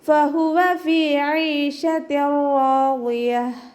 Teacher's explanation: ഹ തൊണ്ടയുടെ ഏറ്റവും അവസാന ഭാഗത്തു നിന്നാണ്, അപ്പോൾ അതിൻ്റെ സൗണ്ട് ഹംസയായി പോവാതെ ശ്രദ്ധിക്കുക.